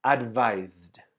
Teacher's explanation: Advised finishes with the sound of the Z. That's why we pronounce the final ed as D.